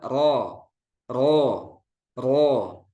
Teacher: ketika membaca huruf ro yang tebal ro itu jangan mencucu ketika fathah